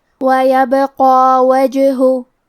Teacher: کلمت وجہ میں جیم پہ جزم ہے، تو کیونکہ جیم بھی حروف القلقلہ میں سے ہے تو ہم یہ حرف کو ہلاتے ہوئے یہ کلمہ کو پڑھیں گے